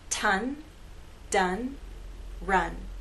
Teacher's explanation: with t and D you have contact between the tip of your tongue and that hard bump behind your Upper Front Teeth